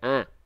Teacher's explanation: kalau dari tengah-tengorokan ya ini H kecil ya kalau terlalu ke bawah itu H besar